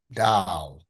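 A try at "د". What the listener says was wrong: Much better. Very good. Ahsanta.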